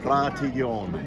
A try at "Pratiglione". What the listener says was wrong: No G. No hard G.